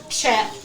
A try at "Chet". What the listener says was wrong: Gotta say it like Jet. You can't enunciate it like Chet.